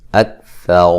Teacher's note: اکثر را کو موٹا ادا کریں گے، را کے اوپر زبر ہے